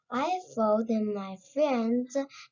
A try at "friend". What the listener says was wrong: But pay attention right here. There's no S in the end of this word, so it should be pronounced as friend instead of friends.